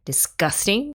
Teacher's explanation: normally when we speak, we emphasize the gus and not dis